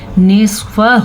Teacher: نصفہ او انقص منہ قلیلا، نصفہ، سواد کو پر پڑھنا ہے اور ہا کے اوپر جو آپ کو مد نظر آ رہی ہے اس کو آپ نے 4 الف کے برابر لمبا کرنا ہے